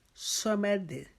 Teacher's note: میم کو باریک پڑھیں گے، دال کو باریک پڑھیں گے